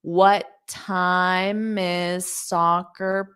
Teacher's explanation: you only need to pronounce one t